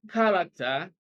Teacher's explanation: character stresses on the first syllable